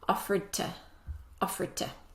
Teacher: The rule is when we have a D sound before a T sound, the D sound disappears. So when this word is said by itself on its own, it sounds like offered.